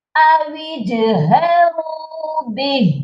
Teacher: اور جیم پر قلقلہ بھی کریں گے، یہ پڑھا جائے گا اویجہروا بہ۔